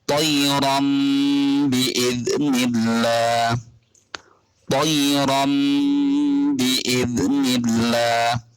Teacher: ketika ada nun mati atau tanwin yang bertemu dengan huruf ba, maka harus dibaca seperti membaca mem. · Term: iklab